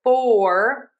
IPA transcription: ˈfɔr.wɚd slæʃ